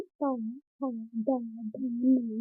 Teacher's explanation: ता, था, दा, धा, न, ये हमारे दंते से बोले जाते हैं